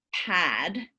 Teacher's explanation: in the case of pad, because that a vowel is followed by a voiced consonant, it's going to be longer.